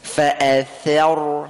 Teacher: Jadi ra tebal, ta-nya tipis